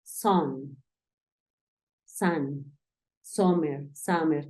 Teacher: Realmente es un fonema que no tenemos en español, ese sonido igual. Es un sonido que nosotros es como si quisiéramos empezar a decir una A y terminamos diciendo una O.